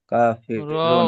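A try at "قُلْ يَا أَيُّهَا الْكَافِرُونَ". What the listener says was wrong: রুন বলছেন। র ওয়াও নুন পেশ রুন টান দিয়ে ছাড়বেন। মধ্যে আরিজ হবে, 3 থেকে 4 টান হবে।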